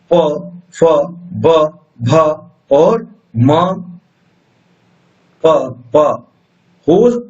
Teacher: प ओष्ठ है, यानी होठों से ध्वनि निकल रही है।